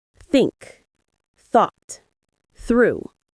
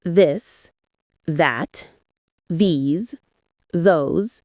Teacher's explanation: Put your tongue between your teeth and push air out for think. For this, your tongue touches the same position but with your voice turned on. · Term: the TH sound